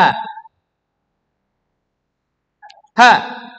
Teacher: huruf H letaknya adalah di pangkal tenggorokan atau tenggorokan yang paling bawah, atau juga bisa disebut dalam bahasa Arabnya itu aqsal halqa.